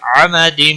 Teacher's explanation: تنوین کے بعد حروف یرملون کا میم آیا ہے، ادغام با غنہ ہوگا